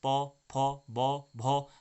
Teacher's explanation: ओष्ठ वर्ग के रूप में इसे जाना जाता है, और उच्चारण स्थान का ओष्ठ या होंठों से इसे बोला जाता है